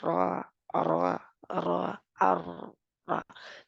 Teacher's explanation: करना ये भी गलत है तो इसको राय मजूरा जो है ऊपर वाले दो दांतों के दरमियान उभरी जगह पर जबान लगती है · टिप जुबान की नोक और पुष्ट दोनों ही लगती है इसकी अदायगी में जुबान को रोल करके सारा हिस्सा लगा दे तो े गलत